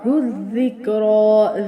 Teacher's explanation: ذال بھی ہوگا، شدت سے بھی پڑھا جائے گا لیکن زا کی آواز نہیں آئے گی